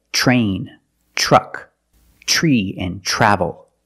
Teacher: when you see TR make the CH sound plus the r it will help you pronounce the r correctly so you don't